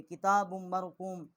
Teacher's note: با کو جو ہے میم کے ساتھ مشدد کیا ہے اور یہاں ہم نے غنہ بھی کیا ہے